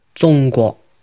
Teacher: In Mandarin, it's pronounced 中国 with a high flat tone and a rising tone. And in Cantonese, it's pronounced 中国 with a high flat tone and a mid-flat tone. 中国中国 The pronunciation of these 2 words might sound pretty close, but the tones are partially different.